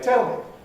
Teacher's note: the weak form is this indeterminate happy vowel